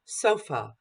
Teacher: Then I have a central unstressed schwa, sofa. It's mid, sofa.